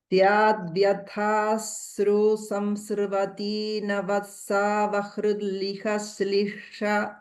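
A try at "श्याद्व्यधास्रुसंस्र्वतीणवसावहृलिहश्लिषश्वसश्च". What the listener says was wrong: तत्र नवसा इत्यत्रापि सकारद्वयं नास्ति. there is no doubling effect there. It is just navasa. It is not navassa.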